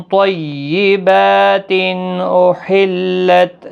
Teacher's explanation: تنوین کے بعد حروف حلقی کا حمزہ ہے، اظہار حلقی ہوگا، با کو کھینچنا ہے ایک الف کی مقدار کے برابر۔